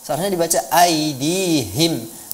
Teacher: H ini keluarnya dari pangkal tenggorokan ya